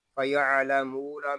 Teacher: فَيَعْلَمُونَ میں میم کو ہم کھینچ کر پڑھیں گے کیونکہ یہاں پہ واو مدہ ہو رہا ہے